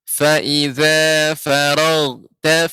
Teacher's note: ghain pengucapannya ketika sukun dia tertahan karena bagian atas tenggorokan.